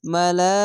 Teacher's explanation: মোটা চিহ্ন মাদ্দে লাজিম, চার আলিফ টেনে পড়বেন।